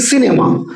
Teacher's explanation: সিনেমা উচ্চারণ করার সময় জিভটা দেখো ঠিক দাঁতেই লাগছে। উচ্চারণ করো সি ফিশ, সি উচ্চারণ করার সময় জিভটা ঠিক দাঁতেই লাগছে, ওপরের পাটির দাঁতের পিছনে। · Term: দন্ত স